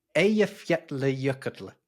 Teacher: there are a couple of double L's in there, but they don't make a L sound. They make a kl sound.